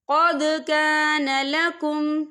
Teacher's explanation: یہاں پہ دال ساکن ہے تو یہاں پر قلقلہ ہوگا۔